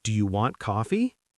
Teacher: Voice goes high on the last syllable. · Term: question lift